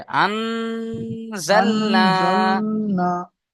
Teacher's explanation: নুন সাকিনের আম, পরে হরফে ইকফার 15টি অক্ষরের মধ্যে আহ, জ এসছে, জ সেহেতু নয় ভাই, নুন, যা। জা, জা, নুন সাকিনকে এক আলিফ পরিমাণ গুণনা করে পড়তে হবে